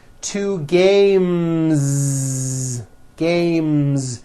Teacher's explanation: when you add an S, the S should also be voiced.